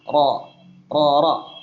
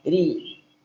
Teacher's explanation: tebal tipis ya kadang tebal tipis seperti ro enggak sama selamanya ro tebal kadang dia tipis ketika kasrah RI ketika dah tebal ru ketika fathah ro ro ro tebal